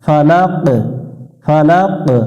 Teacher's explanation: কফ অক্ষরের উপর যখন শুকুন চলে আসে তখন এটা একটু প্রতিধ্বনি সৃষ্টি করতে হয় যেটাকে কলকলা বলে ফালাক ফালাক রব্বিল ফালাকুল রব্বিল ফালাক এখানে ফালাক